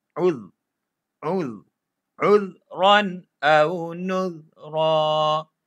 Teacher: Zal, gigit, jangan bunyikan udh. Dia tak ada bunyi kita sentuh je lidah.